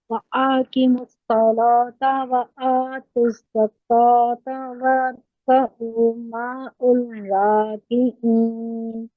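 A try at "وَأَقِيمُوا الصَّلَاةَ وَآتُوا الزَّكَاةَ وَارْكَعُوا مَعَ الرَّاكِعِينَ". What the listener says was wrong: यहाँ पर मिस्टेक हुई है। वह अकीमुस्सला, अकीमुस्सला नहीं, काफ के बाद या ड्रॉप हो गई। ऐसे मार्क कर लीजिए या के नीचे, ताकि नेक्स्ट टाइम आप पढ़ें तो इसको ठीक पढ़ें। वह अकीमुस्सलात।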